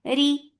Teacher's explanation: ri for ra is light because there is kasra on it